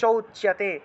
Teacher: এই ওকারটা উ এর মত উচ্চারণ হবে